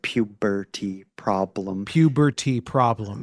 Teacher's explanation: It's powerful because you have those plosive P's. And the B too, like puberty problem.